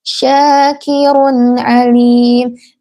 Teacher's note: Ini adalah izhar halqi yang dibaca dengan jelas, tidak dengung, bukan syakirun alim.